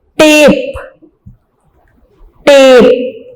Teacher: ए को जरा हमने लिंगर किया स्लाइटली लॉन्ग प्रोनाउंसिएशन में, तो टेप is a long vowel sound.